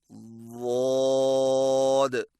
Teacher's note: ضاد की अदायगी में जुबान की जड़ और दरमियान को तालू की तरफ बुलंद करें और जुबान के मोटे किनारे को ऊपर वाली दाढ़ों की जड़ पर आहिस्ता आहिस्ता नरमी से लगाएं